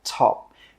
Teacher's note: with that final P sound, we stop the air from coming out and we just say top.